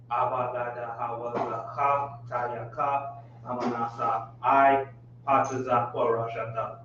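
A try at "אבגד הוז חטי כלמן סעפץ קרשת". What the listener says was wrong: Very good, very good. Well done, right?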